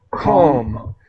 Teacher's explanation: the L is silent. We do not pronounce the L.